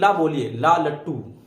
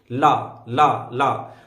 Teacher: ला के टाइम में जीभ ऊपर चिपक जाती है और स्पेस बचता है जीभ के अगल बगल, तो यहीं से वायु क्या होती है, निकल जाती है। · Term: पार्श्विक व्यंजन